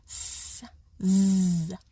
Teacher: the air could come out in a hiss, like a fricative sound.